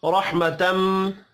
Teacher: رحمتم، را کو زبر کی وجہ سے پر پڑھنا ہے، میم مشدد پر غنہ کریں گے۔